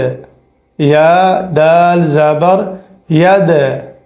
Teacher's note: یا دال زبر ید، یا کو دال سے جوڑنا ہے اور دال کے اوپر جزم ہے، اور یہ دال حروف قلقلے میں سے ہے، یہاں پر آواز ساؤنڈلی بنے گی۔